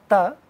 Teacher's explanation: The place of articulation for ta is teeth, where tip of the tongue goes very close or in between two teeth that are upper teeth and lower teeth, and then we get these sounds.